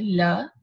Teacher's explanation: Okay, so when we say L, the tip is touching the alveolar ridge and air is escaping by the sides. Okay, so these sounds are called laterals because the air is coming or escaping over the lowered tongue rims.